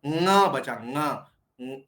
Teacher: लेकिन उच्चारण करना है नाक से। जैसे आप क बोलते समय जीभ कैसे टकराते हैं? ठीक वैसे ही टकराओ लेकिन नाक से बोलो। · न के अंदर दांत के ऊपर जीभ टकराती है। न बोलते समय हमको जीभ टकरानी है कंठ में ही, लेकिन उच्चारण करना है नाक से।